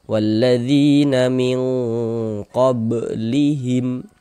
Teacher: Maka huruf tersebut dibaca panjang. Misalnya dzi kita baca panjang, mad tabi'i panjang 2 harokat.